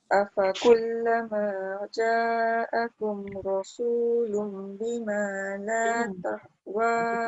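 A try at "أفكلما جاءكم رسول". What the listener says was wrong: Kat situ ja kena jaga, rasulum kena jaga. Ja tu tak cukup panjang.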